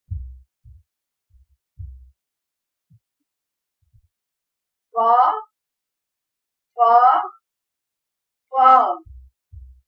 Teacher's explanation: اوپر کے اگلے دو دانتوں کی نوک جب نیچے کے ہونٹ کے اندر والے حصے سے لگے تو فا ادا ہوتا ہے